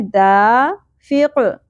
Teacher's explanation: الف حرف مدہ ایک الف کے برابر کھینچنا ہے دا فق قاف ساکن پہ قلقلہ ہوگا